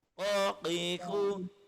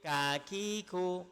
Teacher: Jadi qaf dengan kaf makhrajnya berhampiran. Sama-sama berada di pangkal lisan, tapi qaf dekat atas bawah, kaf dia naik sikit.